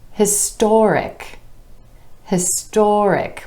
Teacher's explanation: When we add the IC ending, the stress shifts to the OR sound right before the suffix